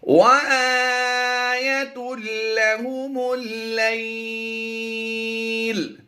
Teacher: یہاں پر مد لین عارض ہوگی، کیونکہ ہم نے پیش کو وقف کی وجہ سے ساکن کر دیا تو یہ عارضی سکون ہوا۔